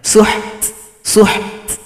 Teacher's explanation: berikan bunyi hamas. Ada suara yang berisikan angin.